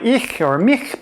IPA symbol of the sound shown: ç